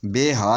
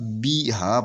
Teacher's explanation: بے ہا نہیں پڑھنا، یہ بے ہا مجہول ہو جائے گا، بی ہا پڑھنا ہے